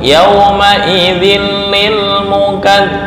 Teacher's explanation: Tanwin bertemu lam idgham bila gunnah. Menyatu tapi nggak boleh dengung. Gabung nggak boleh dengung.